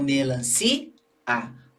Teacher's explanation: o i e o a ficam separados porque observe que eu estendi o som da sílaba si e o a é pronunciado depois. Então, cada vogal na sua sílaba, certo? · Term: iato